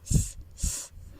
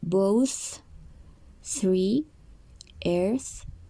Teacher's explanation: with no vibration, which is th, th